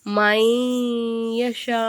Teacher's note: நம்ம வந்து ஓதணும் சரிங்களா அப்ப ஒரு எழுத்தை இன்னொரு எழுத்துல ஜாயின் பண்றோம் மீமை கொண்டு வந்து யால ஜாயின் பண்றோம் குன்னா செஞ்சு ஓதணும்